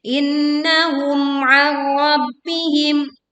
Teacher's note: Innahum, mim sukun bertemu ain, kita jelaskan bunyi mim sukunnya tanpa melebur ya, dan juga tidak memantul